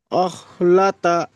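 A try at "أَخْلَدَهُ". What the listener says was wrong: আখলাদা, দাহ, দাল হাজাবার দাহ। আখলাদা।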